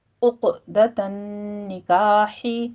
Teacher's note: قلقلہ کریں گے اور قلقلہ پر کیا جائے گا، عقدۃ نکاح، نون مشدد ہے غنہ واجبہ کیجئے ، تا میں بھی ہا دونوں جگہوں باریک پڑھی جائے گی،